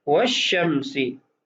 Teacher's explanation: ہم اس لام کو نہیں پڑھیں گے بلکہ اس کو پڑھنے کے اندر شین کے ساتھ تبدیل کر کے اس کا ادغام کریں گے ، والشمسی نہیں پڑھیں گے، والشمسی پڑھیں گے۔ تو آئیے عبارت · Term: حروف شمسیہ